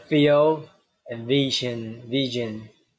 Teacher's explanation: And labial dental, bottom lip and upper teeth.